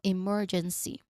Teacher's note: There's a short E sound there too. Now again, remember the emphasis is on the second syllable mer.